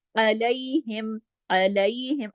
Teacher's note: आइन को गले से पढ़ना, अलैहिम, अलैहिम, इस तरीके से, ठीक है।